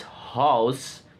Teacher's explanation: glide from low to high back